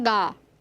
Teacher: A língua cola lá no palato mole, na região posterior do nosso trato vocal, músculo palato mole, e depois ela se abaixa, abrindo a passagem da cavidade oral. Então é ga.